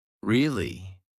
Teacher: Now say it with rising intonation. Your voice goes up at the end.